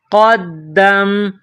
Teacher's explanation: نقطوں والا قاف، بڑا قاف، اس کو موٹا پڑھیں گے۔ اس کے بعد دال، دال کے اوپر تشدید ہے، دال مشدد ہے، تو قاف اور دال کو ملائیں گے تشدید کی وجہ سے۔